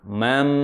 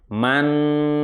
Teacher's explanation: Nun sukun bertemu mim. Maka membacanya harus dengung yang lama. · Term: idgham bi gunnah